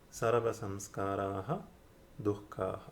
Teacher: Again, the sandhi works in the same way, in the sense that aha in front of do becomes a do. The visarga is dropped.